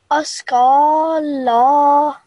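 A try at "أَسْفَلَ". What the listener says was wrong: First, just to rectify, this sound is fa sound, with thin sound, and you pronounce it when flow of air comes first, and then the sound of the letter. So instead of us, it is askala.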